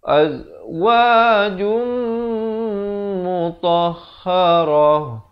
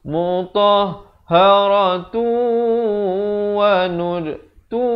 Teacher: Mutahharah, ta marbutah, ta simpul, bila diwaqafkan ditukarkan menjadi bunyi ha. Tapi kalau wasal, mutahharatu wa nudtu, di sini jadi idgham bi gunnah kalau kita nak wasal, kalau kita nak sambung.